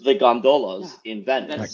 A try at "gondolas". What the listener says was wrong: gondolas? I think you're putting the wrong emphasis on the wrong syllable. gondolas?